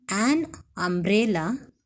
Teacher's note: The umbrella starts with the sound UH, a vowel sound.